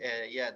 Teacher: Innalladzina, nunnya tasydid, tasydid, panjangkan gunahnya ya